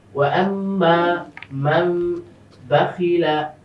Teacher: নুন সাকিনের পরে বা এসেছে, ইকলা, তাই না? মিম দ্বারা নুন সাকিনটাকে পরিবর্তন করতে হবে।